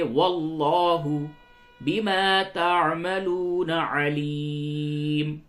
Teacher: واللہ لام کو پر کیجئے